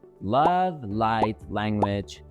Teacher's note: English actually has two versions of the letter L. The first is called the light L, which usually appears at the beginning of words like love, light, language, etc.